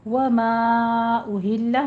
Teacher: مد منفصل جائز ہے، 4 کاؤنٹ کریں گے